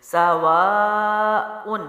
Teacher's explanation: سواء، سین زبر سا پڑی حرکت جلدی چھوڑا، وا الف مد ہے، ٹھیک ہے، اس کو ہم لمبا کریں گے لیکن اوپر ایکسٹرا مد بھی ہے، یعنی 2 سے 3 اس کو لے جائیں. سواء، حمزہ کے اوپر 2 پیش ہے، تنوین ہے تو ان جلدی چھوڑیں گے.